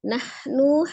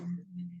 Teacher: ha sukunnya dihamskan ya, dialirkan nafasnya ketika mengucapkan huruf ha sukunnya dari tenggorokan bagian tengah